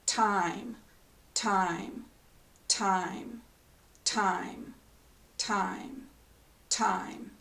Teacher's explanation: T is voiceless meaning the sound is only air and D also has air but it adds Voice or additional